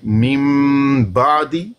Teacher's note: نون کو نہیں پڑھا ہم نے, اس کی جگہ پر جو میم ہے اس کو پڑھا ہے. میم بعدی, جب پڑھتے ہیں نا تو ہونٹ بڑی نرمی کے ساتھ ملیں گے.